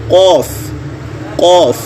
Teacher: जब आप क़ाफ़ पढ़ेंगे तो देखें ज़ुबान का जो जड़ है वो ऊपर की तरफ उठेगी और तालू के नर्म हिस्से को छू लेगी, तो वहाँ से क़ाफ़ की अदायगी होगी।